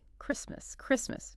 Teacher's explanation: No, no T sound. It's silent like a little ghost letter.